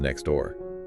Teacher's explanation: If a native speaker says next door, they rarely actually pronounce the T in next. · Yeah, I don't say the T at all. Because your tongue physically cannot release the T and then form the D fast enough without making this clumsy little pause. So it just becomes next door. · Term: elision